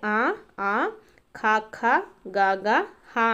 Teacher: కంఠముల నుండి పుట్టినవి కాబట్టి కంఠములు అంటాము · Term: కంఠ్యములు